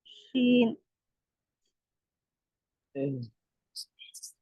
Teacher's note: शीन हुरूफ शजरिया ऊपर दांतों को लगने से अदा होती है, वसतुल लिसान में से है।